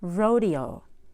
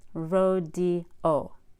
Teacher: after a front long vowel such as long e long a long I or o a you add a Y before another vowel again this smoothens the transition between vowels